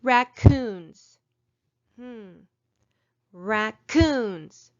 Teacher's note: i say that last part a little bit louder and higher than the first part